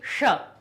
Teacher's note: श मूर्धा से निकलती है, इसीलिए ये इसका स्थान हमारा मूर्धा हो जाता है